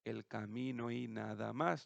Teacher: se están uniendo la O de camino con la Y, formando una sola sílaba entre las dos